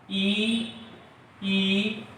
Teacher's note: ई, और य का जो उच्चारण स्थान है वो तालु है